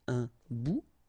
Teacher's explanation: Remember, final T not pronounced.